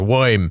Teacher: I'm not going to hit the R, so I'm going to make it kind of sound more New York-ish